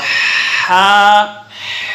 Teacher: درمیان حلق سے ادا ہوتا ہے